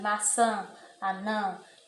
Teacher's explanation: um som nasal, você fala como se estivesse falando pelo nariz